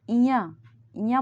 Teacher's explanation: जबकि ञ ञ बोल रहे हैं तो ओठ टच नहीं हो रहा।